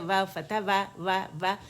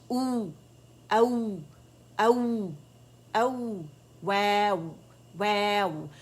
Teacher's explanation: ہمارے جو دونوں ہونٹ ہیں اس کو جدا کریں گے، دانتوں سے لگائیں گے نہیں